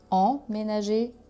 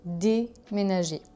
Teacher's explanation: Déjà pour la prononciation c'est presque le même mot, il y a juste en, voyelle nasale, et dé qui fait la différence.